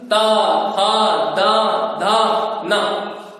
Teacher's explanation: ता का उच्चारण स्थान है दंत। ता, था, दा, धा, ना, ये इनका उच्चारण स्थान है दंत।